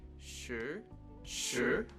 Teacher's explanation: it's known as a rising tone because you start with a very low pitch in your voice and then you work up to a higher pitch